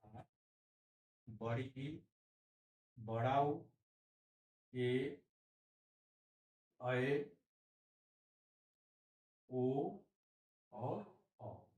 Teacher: ह्रस्व स्वर से दुगुना समय जिन वर्णों के उच्चारण में लगता है उसको हम दीर्घ स्वर कहते हैं